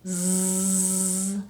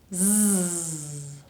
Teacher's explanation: So put your mouth into the position that we use for the S sound, but instead of producing it with just air, I have to turn on my vocal cords. If I touch my throat, I can actually feel them vibrating.